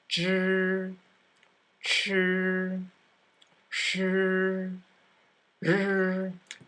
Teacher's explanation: And now, when you pronounce these sounds, the tongue will hardly move at all. So to pronounce the vowel, the tongue needs to stay retroflexed.